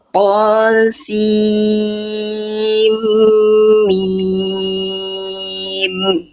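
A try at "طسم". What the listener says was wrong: Dari perpindahan sin ke em udah bagus, tinggal lebih ditahan lagi. Sin ketemu em kan idgham bigunah, jadi emnya ditahan lagi. Tosim mim. Tosim mim.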